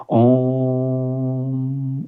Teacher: बच्चों ये हमारे हिंदी व्याकरण में एक ही है, कौन सा, जैसे ओम, जिसको हम बोलते हैं ओम, इस प्रकार से लिखा जाता है। इसकी ध्वनि के उच्चारण करने में बच्चों 3 गुना अधिक समय लगता है। जैसे उच्चारण करता हूँ मैं, जैसे आप भी करिएगा साथ में, ओम, इस प्रकार से बच्चों इसका उच्चारण किया जाता है, तो इसके उच्चारण करने में 3 गुना अधिक समय लगता है। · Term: प्लुत स्वर